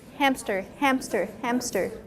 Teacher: So, people tend to misspell the word within a P because you're inserting a P in the pronunciation